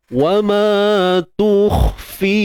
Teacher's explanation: Yang kha ni pula tebal. Jangan lupa huruf kha isti'la. Angkat pangkal lidah.